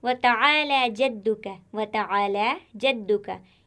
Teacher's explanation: यहाँ पर सभी हर्फ बारीक है, कोई भी हर्फ मोटा नहीं।